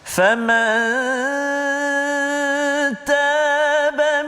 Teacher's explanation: nun mati bertemu dengan ta, dengung dua harakat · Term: ikhfa hakiki